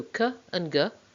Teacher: or the soft palate so the place of articulation is vela we stop the air completely and release it suddenly and that's what makes it a plosive or a stop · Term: velar plosives